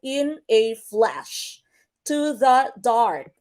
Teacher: Anapistic, that would be unstressed, unstressed, stressed.